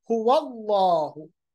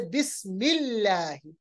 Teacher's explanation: अल्लाह को देखिए, अल्लाह का लाम मोटा पढ़ा जाएगा